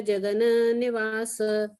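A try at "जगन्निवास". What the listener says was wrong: Jagana is not there. Jagan Nivasa. Jagan Nivasa.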